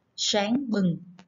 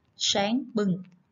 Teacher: khi đọc tiếng sáng chúng ta cần cong lưỡi về phía vào họng để phát âm cho đúng